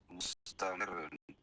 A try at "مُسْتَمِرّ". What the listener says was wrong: موٹا مت کرو، باریک کرو. مر. مستمر.